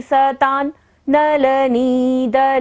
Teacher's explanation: सतान, सता पर यहाँ पर जो बिंदु है ता पर, वहां पर बिंदी का उच्चारण न होगा क्योंकि बिंदी के बाद क्या आ रहा है, न, नलनी।